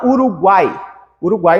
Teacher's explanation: é uma vogal que fica no meio, sempre no meio a vogal, e depois uma semivogal em cada lado. Então nós temos o I e o U, Uruguai, né, e o A no meio. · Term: tritongo